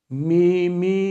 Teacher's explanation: Bu iki harfte mim ile nun harfinde gunne sıfatı lazimi bir sıfattır. Gunne sıfatı olduğu için kesra metli telaffuzunda genellikle gunne sesinin katışmasına engel olunamıyor.